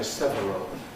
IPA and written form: ˈsevərəl (several)